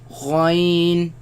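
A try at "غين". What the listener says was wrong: Again, the ya sound. Do not produce the nasal sound. They come from the top part of the throat, right? Where the root of the tongue raises against the uvula and produce the sound.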